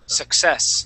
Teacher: that word here is going to be success with the accent at the end.